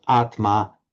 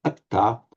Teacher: The final R remains the same, and the Tma, by normal phonetic progression, the Tma of Sanskrit becomes a double T, so Atma, Atta.